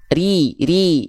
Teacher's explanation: Oke, jadi ri. Oke, ro berharokat kasro dibacanya tipis ya